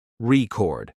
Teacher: when it's a verb, the stress moves to the second syllable